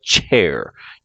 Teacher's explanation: the just sounds so cha as in chair it's like chair you're going to start with the a with a t and slide into a sh